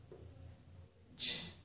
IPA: tʃ